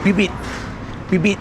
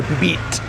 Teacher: It's almost like a silent letter, but it's not. You actually say the letter, but without what they call aspiration.